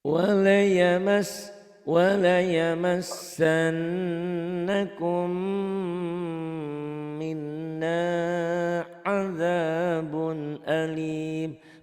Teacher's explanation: Ada ditahannya satu alif sampai satu alif setengah atau tiga ketukan dan ada dengungnya. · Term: gunnah